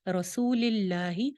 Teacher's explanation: لفظ جلالہ باریک رہے گا، موٹا نہیں کریں گے